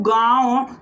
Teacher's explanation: अनुनासिक का मतलब चंद्र बिंदु का नाक और मुंह दोनों जगह से उच्चारण होता है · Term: अनुनासिक स्वर